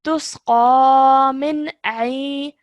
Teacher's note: noon sakin or tanween is a clear sound and no nasal sound is produced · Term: clear pronunciation